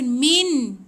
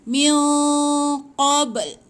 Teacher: Dengungkan, lepas tu bersedia nak sebut qaf. Jangan sebut nun, jangan baca min. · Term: ikhfa hakiki